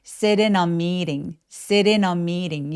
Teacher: sit in a meeting 이라고 덩어리채로 연결해서 소리를 꼭 내주셔야만 합니다